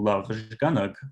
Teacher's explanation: We see that the first syllable, again, has, for instance, a complex coda, whereas the second syllable is an open syllable with a weak vowel, but we nevertheless see second syllable stress. So stress is falling on that second syllable despite the fact that you might think the first syllable is heavier.